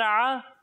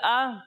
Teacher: جب ہم عین کی ادائیگی کریں گے تو اسے حلق کے درمیانے حصے سے پڑھیں گے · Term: حمزہ